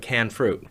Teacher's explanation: Northwest natives sometimes drop the ending ed. So when you say things like canned fruit, a lot of the time it comes out here like canned fruit, where it's now switched from being a past participle modifier, ed, to being a noun modifier without the ed on it.